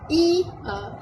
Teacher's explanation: Lidah depan ni dia akan, waktu kita sebut I tu, lidah depan dia akan naik tinggi tanpa menyentuh lelangit keras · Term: vokal depan